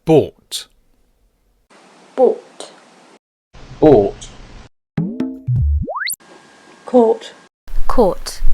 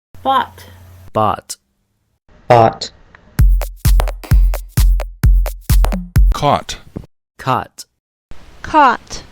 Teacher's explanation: The sound is a long O, bought. Now, as we heard, there are many variations of this sound in the UK, but in general terms, we can compare that with the American bought, which has more of an ah sound.